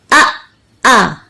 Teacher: हमजा में एकदम आवाज बंद हो जाती है।